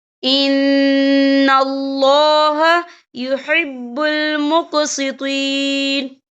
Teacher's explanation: یہاں نون مشدد بھی ہے، تو یہاں غنہ بھی کریں گے